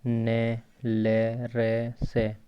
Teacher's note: जिन व्यंजन वर्णों का उच्चारण ऊपर के दांतों से थोड़ा ऊपर, व्यंजन वर्णों का उच्चारण ऊपर के दांतों से थोड़ा ऊपर मसूड़ा, जिसको मसूड़ा यानी वर्तस्य के साथ जीभ के स्पर्श करने से होता है, वे वर्तस्य व्यंजन कहलाते हैं।